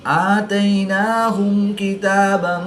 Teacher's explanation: میم ساکن کے بعد حرف با اور میم کے علاوہ حرف کاف ہے تو یہاں پر میم ساکن میں اظہار شفوی ہوگا، غنہ نہیں کریں گے۔